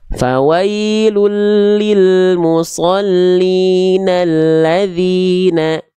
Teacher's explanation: kalau kita sambung ini dengan huruf sebelumnya, hamzah wasolnya nggak dibaca. Sering kita sebut dengan alif lam syamsiyah atau idgham syamsi.